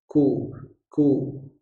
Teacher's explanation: Kalau dia berharokat dhammah boleh langsung monyong karena posisi hurufnya adalah huruf syiddah. Ku. Tapi tidak diangkat lidahnya karena dia bersifat infitah.